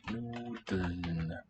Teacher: ELN in the spelling, but there is really no true vowel after the stem syllable.